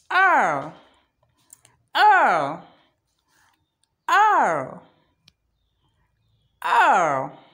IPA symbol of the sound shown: æ